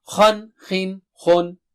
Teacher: thickness and highness is there everywhere, whether it has kasra or dhamma